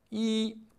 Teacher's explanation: Lorsque i est seul ou lorsqu'il forme un numéro et se prononce au premier ton.